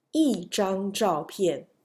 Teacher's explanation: 张 is first tone, so it's lighter. So you can use E as a fourth tone here. 一张照片, E is fourth tone.